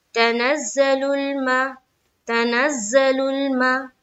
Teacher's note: अलीफ लाम अगर हुरूफे कमरी के शुरू में हो तो अलीफ को नहीं पढ़ा जाएगा, सिर्फ लाम को पढ़ा जाएगा। लुल मा मीम के ऊपर जबर की हरकत है, जबर को जल्दी पढ़े, थोड़ा भी ना खींचे।